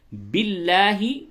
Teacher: لام لفظ اللہ کے لام سے قبل زیر ہے، باریک پڑھی جائے گی